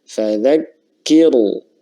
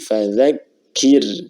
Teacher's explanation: Nah, maka ra-nya dibaca tipis ya. Bukan fadzakiru, tapi fadzakir tipis ya.